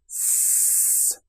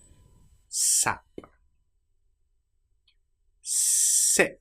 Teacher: Teeth close together, air being pushed through S, and the tongue quite close behind the teeth. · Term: s sound